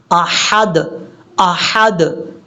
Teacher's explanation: حمزہ کے بعد جو ہا ہے یہ ہا بریک ہے